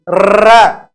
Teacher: हमारी जिह्वा वाइब्रेट करती है, वाइब्रेट यानी कंपन करती है, और कंपन के कारण यह ध्वनि प्रकंपी नाम से भी जानी जाती है